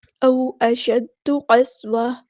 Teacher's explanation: او اشد قسوہ، قاف کو ہم نے پورا ادا کرنا ہے، ہیوی لیٹر ہے ہمارا، سین کی سیٹی واضح کرنی ہے